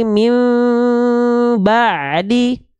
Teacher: nun sukun yang disamarkan dengung menuju Mim paham paham kenapa mim karena memang disamarkan dan didengungkannya menuju mim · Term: iqlab